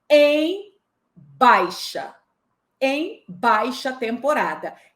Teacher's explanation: Em baixa temporada, eu também tenho o vocábulo baixa, onde a tônica também é a sílaba bai. E o em, professora, continua fraco.